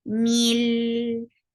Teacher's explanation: So you are not creating gunna. You are not keeping sound in your nose at all. Mil. There will be tawassut. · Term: idgham without gunna